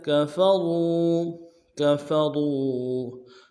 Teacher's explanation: کاف کو نرم سے ادا کریں گے، فا کو بھی نرم سے ادا کریں گے، را کو واؤ کے ساتھ ملانا ہے، واؤ مدہ، را کو موٹا کریں گے